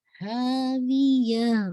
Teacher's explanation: ٹھیک ہے، ہاں یہ آپ کا ہا نہیں ہے، ہاں ہے، ہاں ہاویہ. وی کی کسرہ شارپ رکھے گا، یا کے بعد ہا کو واضح کیجیے گا